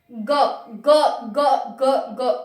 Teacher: ऐसा लग रहा है कि हमारा कंपन हो रहा है ग में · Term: सघोष